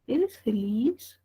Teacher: es el único tipo de enunciado que tiene tono ascendente